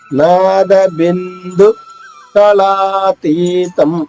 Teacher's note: నాద బిందు, నా దీర్ఘంగా, బిందు బి తర్వాత అనుస్వరం ఉంది, నాలా పలకాలి.